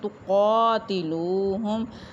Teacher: تُقَاتِلُوهُمْ قاف کے اوپر کھڑی زبر ایک الف کے برابر لمبا کریں گے۔ واو ساکن لام کے اوپر پیش واو مدہ، اس کو ایک الف کے برابر لمبا کریں گے